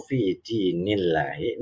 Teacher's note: lafaz jalalahnya dibaca tipis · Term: lafzul jalalah tarqiq